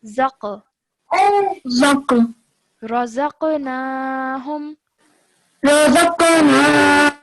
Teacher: because it has a sukoon on it, when you join it to the dha, then you do so with a jerk sound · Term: qalqala